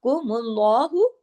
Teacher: अल्लाह के नाम के अंदर फिर लाम जो है वो हैवी हो जाएगा